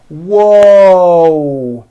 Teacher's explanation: there's a w sound at the beginning of that but there's also a hidden W sound at the end